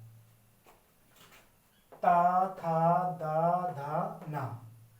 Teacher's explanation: जब आप इन का उच्चारण करेंगे तो आपकी जीवा दांतों पर छुके जाएगी